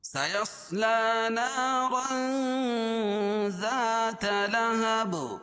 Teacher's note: لہب وقفہ کی حالت میں دو زیر کی تنوین کو یہاں جزم سے بدل دیں گے اور اس پر قلقلہ ہوگا، کیونکہ یہ با حروف قلقلہ کے 5 حرفوں میں سے ہے.